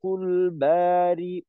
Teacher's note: আচ্ছা, এখানে খলিকুল বারিউল উল উ উ এখানে যদি বলি বারিউল বারিউল, তখন কিন্তু হামজার মাখরাজটা এটা ক্লিয়ার হয় না আর কি, মাখরাজের ব্যবহারটা হয় না। বারিউল, হামজাতে একটু চাপ দিয়ে বারিউল হবে